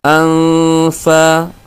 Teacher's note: nunnya dibaca samar tidak terlalu jelas